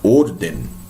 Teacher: Eu não vou falar ordem, eu vou falar orden. Porque o O tem sempre esse somzinho fechado, som de O.